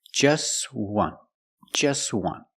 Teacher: We see the T is between consonants, so it's silent. Link the sounds together.